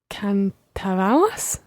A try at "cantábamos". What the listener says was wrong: Almost perfect. You've got the letters right. It's just the stress that you've got wrong. Cantábamos. Cantábamos.